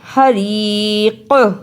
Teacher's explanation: رکنے کی صورت میں قاف پر قلقلہ بھی کرنا ہے